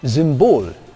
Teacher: So words like symbol come out as Symbol in German, clearly a voiced alveolar fricative